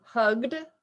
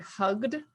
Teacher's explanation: the G is a voice sound, and that's why it's a D sound at the end